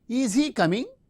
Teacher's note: In oral mode, the fronting of the verb and the rising tone. Since it is a polarity question or yes no type question, we use the rising tone.